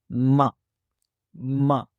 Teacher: اس میں سب سے پہلے حرف میم ہے اور یہ حرف ہونٹوں سے ادا ہوتا ہے اور اس کی آواز ہے ما، ما، ہونٹوں سے ادا ہونے والا حرف ہے، دونوں لپس کو آپس میں ملاتے ہوئے اس کی آواز ادا کی جاتی ہے